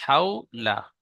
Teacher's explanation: অউলিন সর্বদা নরম আওয়াজে তাড়াতাড়ি পড়তে হয়, টান দেওয়া নিষেধ।